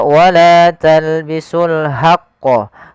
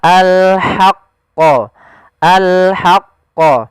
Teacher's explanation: Jangan dibaca wala talbisul haqqa, tapi dia ha posisinya adalah kita bagaimana menyempurnakan huruf ha kecil, yaitu kita mengeluarkan dari tengah tenggorokan kita ha disertai dengan adanya nafas. Maka al-haqqa, al-haqqa.